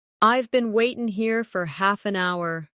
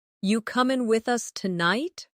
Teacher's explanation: Waiting becomes waitin'. Are you becomes ya.